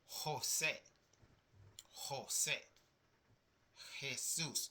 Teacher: So the J has a strong H sound I would say.